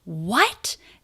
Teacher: High in pitch, showing exasperation, amazement, disappointment. What? And it really goes up in pitch.